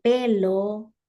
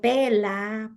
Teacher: el niño sustituye el sonido r por la L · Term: dislalias